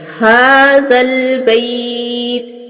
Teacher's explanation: बा के ऊपर शद है, इसको सख्ती से अदा किया जाएगा। आगे हाजा, हाजा के ऊपर खड़ी ज़बर है, हा को, इसको एक अलिफ के बराबर मिकदार के बराबर लंबा करेंगे।